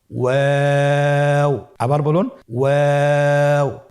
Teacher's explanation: 2 ঠোঁট গোল করে মাঝখানে ফাঁক রেখে হরফটি উচ্চারণ করতে হবে।